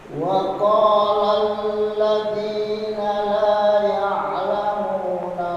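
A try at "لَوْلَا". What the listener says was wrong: laula panjangkan.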